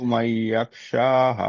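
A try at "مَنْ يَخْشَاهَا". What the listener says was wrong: মুনজিরু, মাই, মাই নাকে তুলতে হবে, মাই ইয়াকশা।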